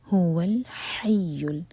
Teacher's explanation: هو الحی ہا حلق سے یا پر شدہ، تو یا کو زور دے کر پڑھا جائے گا